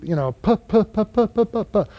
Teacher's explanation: they'll expel the sound through their lips as they hold the lips together